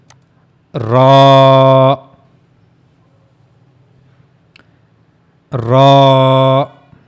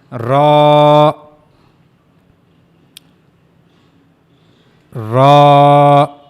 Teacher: For pronouncing Ra, you have to use top of the tip of the tongue, and it will connect to the gum of the two top front teeth. These are the two top front teeth, and you have to connect the tip of your tongue to the gum here, not to the teeth.